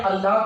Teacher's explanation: इसके बाद अगर हम बात करते हैं अल्लाह की, अल्लाह भी यही है, अल्लाह, तो अल्लाह में भी हमारा क्या होता है, अल्लाह में आ का उच्चारण जो है वो 3 गुना ज्यादा बढ़ जाता है। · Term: प्लुत स्वर